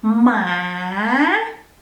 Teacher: it has rising tone so you rise it and then go a little bit down